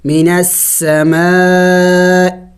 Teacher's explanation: حمزہ حروف حلق میں سے ہے اور حلق کے آخری حصے سے جو سینے کے قریب ہے اس سے ادا کیا جاتا ہے